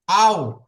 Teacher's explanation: দুই ঠোঁট না মিলিয়ে মাঝখান হইতে উচ্চারিত হয় ওয়াও। দুই ওয়াও ঠোঁট, জি, দুই ঠোঁট, এই দুটি ঠোঁট না মিলিয়ে, অর্থাৎ পাশ মিলবে, মাঝখান মিলবে না।